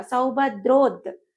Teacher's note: సౌభద్రోద్ అంటున్నాము. సంయుక్తాక్షరం వచ్చిందని ముందు అక్షరం పైన ఆఘాతం పడుతుంది కాబట్టి ద్రోద్ అంటున్నాం.